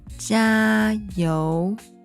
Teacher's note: So remember, the second tone should start at a relatively low pitch